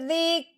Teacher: آگے کاف کے اوپر جزم آنے کی وجہ سے کاف ساکن ہو گیا. اب ہم نے زال کو کاف ساکن کے ساتھ ملانا ہے، نرمی کے ساتھ، ہلانا نہیں ہے، جھٹکا نہیں لگانا. زال کاف زیر ذک.